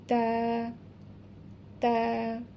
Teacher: জিহবার আগা সামনের উপরের দুই দাঁতের গুড়ার সাথে লাগাইয়া তা উচ্চারিত হবে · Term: মাখরাজ